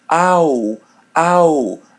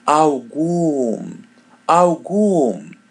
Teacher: Algum. Letter L is pronounced as W.